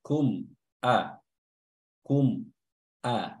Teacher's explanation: mim sukunnya dibaca jelas, tidak ditahan dan juga tidak samar-samar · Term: izhar syafawi